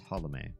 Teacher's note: It's pronounced Holome with a slight skip in your step between the L and the M. It's not Holme, actually.